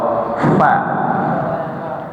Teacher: Makhraj fa hanya menggunakan satu bibir. Ini fa, gigi seri menempel di perut bawah.